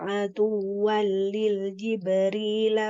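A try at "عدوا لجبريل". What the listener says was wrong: Di Jibril, tidak ada lam tambahan. Adu wali Jibril.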